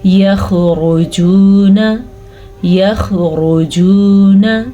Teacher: یخرجون، یخرجون، لمبا نہیں کرنا نون کو۔ اکثر لوگ کیا کرتے ہیں آخری لفظ خامخواہ لمبا کر دیتے ہیں، الف مدہ بنا دیتے ہیں یعنی کہ پڑھتے ہیں یخرجون، نا نہیں ہے یہ، نا، یخرجون۔